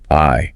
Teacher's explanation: So it moves, starts low, and then glides up. The letter says its name. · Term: long I